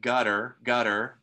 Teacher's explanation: then there it is a tap and for some people it sounds like a d sound